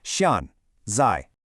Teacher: a rising tone makes it sound like a completely different word. So keep it sharp and falling. · do not use a rising tone on that first syllable. It's such a common mistake, but a rising tone makes it sound like a completely different word.